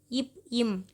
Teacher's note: மேல் இதழும் கீழ் இதழும் பொருந்துவதால் பிறக்கின்றன